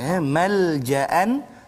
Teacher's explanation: Jadi kita baca dengan izhar halqi. Malja'an, jangan dengung pula